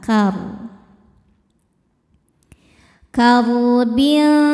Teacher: Ro sukun dibaca secara tafkhim karena baris sebelumnya fathah. Cara bacanya ro dibaca dengan tebal.